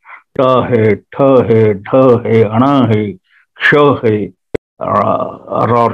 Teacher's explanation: जीभ जो है ऊपर तालू के साथ टच होती है और थोड़ा सा बेंड होती है या टेढ़ी होती है या उल्टी होती है